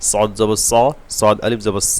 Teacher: সদ বলার সময় জিব্বার গোড়া হালকা উপরের দিকে উঠবে এবং আইনের আবাস পাবে, তাহলে সদ মোটা হবে।